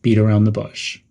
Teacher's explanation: End with a slightly downward intonation.